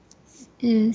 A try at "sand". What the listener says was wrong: Yeah, so this is a short A, so this should be pronounced as sand.